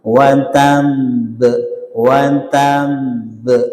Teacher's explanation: Ba huruf qalqalah ya berharakat tasydid ya. Huruf qalqalah di akhir kata berharakat tasydid dibaca berhenti atau wakaf. Maka sangat kuat. Watamb watamb jadi kuat.